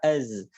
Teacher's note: Ingat zai bukan hams, dia jahar jangan sampai keluar udara.